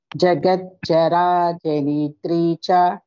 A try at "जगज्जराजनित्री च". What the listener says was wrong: Not nitri, nitri. Jagajjanitri. Jagajjarajanitri cha. It's not ni, no elongation for ni.